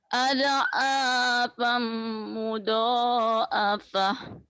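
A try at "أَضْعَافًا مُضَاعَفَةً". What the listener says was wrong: Jangan ada kol-kolanya ya. Jangan ada ad'afam mudha'afah. Mudha'afah.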